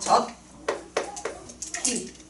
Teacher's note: 쓸 때는 지읒과 히읗이 만났는데 치읒이라는 거센 소리로 축약되는구나